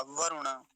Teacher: इतना ही ध्यान रखेंगे और रे पर हरस उकार होता है छोटे उ की मात्रा होती है तो वरुण जल्दी ही बोला जाएगा